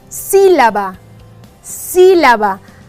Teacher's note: aquí la sílaba tónica es la si